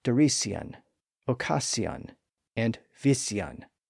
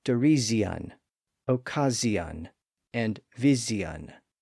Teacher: As we've seen, the S sound is voiceless. But at some point, the S sound in those words started to become voiced. So it became a Z sound.